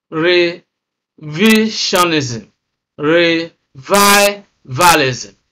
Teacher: Immediately after the prefix, the next syllable is stressed.